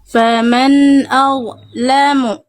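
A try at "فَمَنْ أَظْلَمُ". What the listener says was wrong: Oke, huruf dha pastikan ngalir suaranya. Jangan putus, jangan nggak jelas suaranya. Faman a'lamu ngalir suaranya deras karena dha sifatnya rokhwah Bunda. Rokhwah itu mengalir suara. Faman a'lamu. Jadi harus ngalir. Harus ngalir. Kalau nggak ngalir berarti sifat rokhwah dari dha-nya tidak tertunaikan. Faman azlamu.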